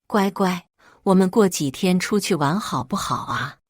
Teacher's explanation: 这故意压着嗓子的气泡音，活像只行走的唐老鸭